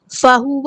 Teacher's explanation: ہاں سمپل پڑھیں گے، واو کی زبر کو لمبا نہیں کریں گے